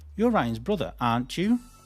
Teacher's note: if I'm using a question tag to actually check the information to make sure I'm right and I'm not making a mistake, we rise. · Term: intonation rises